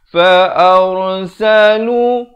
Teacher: Fa'arsalu, ra di sini jadi tebal. Jangan baca fa'ar tetapi ar.